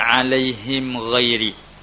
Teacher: Baca dengan ketiadaan ghunnah, dengan tidak ada dengung. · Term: Izhar